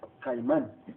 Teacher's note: Vemos que la acentuación va en la última sílaba, que es man, termina en N y también se acentúa.